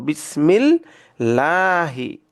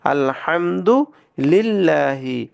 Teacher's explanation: এই লামের পূর্বে যদি জের থাকে তাহলে এই লামটাকে আমরা বারিক বা পাতলা করে বলবো